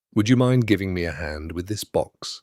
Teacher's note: Rising tone on would you mind? And if you have a moment to sound more tentative and respectful, say, would you mind giving me a hand with this box with a calm pace and a slight pause before the result?